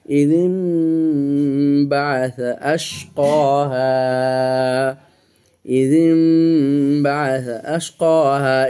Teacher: এখানে নুন সাকিনের পরে বা এসে ইকলাব হয়ে গেছে, এই জন্য যে জালমিম জের জিম হবে, নুনকে উচ্চারণ হবে না।